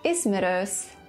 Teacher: in the word ismerős, the last vowel is front rounded